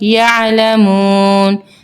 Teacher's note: مد عارضی وقفی کا رول اپلائی ہوگا, یعنی کہ وقف کی صورت میں اس کو ہم کھینچیں گے